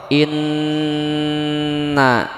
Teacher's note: suara yang jelas dan nyaring yang keluar dari al-khaisum pangkal hidung jadi guna ini keluar dari sini suara yang jelas dan nyaring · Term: gunnah